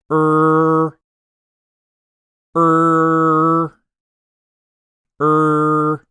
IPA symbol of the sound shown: ɝ